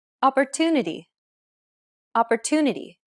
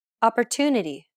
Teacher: The stressed syllable to in opportunity is pronounced longer than all the other syllables. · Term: stress-timed language